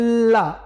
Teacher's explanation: वायु जो होता है उसके पार्श्व से निकल जाती है, जीवा के पार्श्व से निकल जाती है, ला, साइड्स खुले होते हैं, तो ये पार्श्विक है।